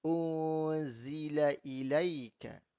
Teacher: Nun mati bertemu zai ikhfa hakiki.